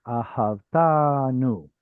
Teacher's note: instead of having ahavta anu, the two a's simply collide and become one.